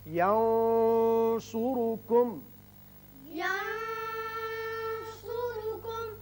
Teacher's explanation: نون پر آپ نے آواز تھوڑی سی گول کر کے موٹی سی نکالی ہے، وہ صاد کی وجہ سے، صاد حروف مستعلیہ میں سے۔